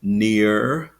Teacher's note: General American English, it's that rhotic, so near with that rounded R sound. Southern Standard British English, near, so an extended I sound, and then received pronunciation historically had the near sound.